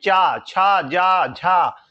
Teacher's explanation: ये कहां से बोले जाते हैं, तालु से बोले जाते हैं